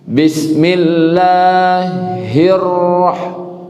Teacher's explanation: jadi ketika membuka mulut, makhrajnya bertukar menjadi wow. Ada menambah huruf di situ. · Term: ra bertasdid